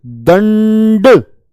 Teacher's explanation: ये न की आवाज आ रही है किससे पहले ड से पहले